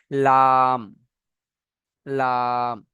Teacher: আচ্ছা, 8 নম্বর মাখরাজ হলো, জিভের আগার কিনারা এবং সামনের উপরে দুই দাঁতের গড়ার সাথে লাগিয়ে উচ্চারণ হয়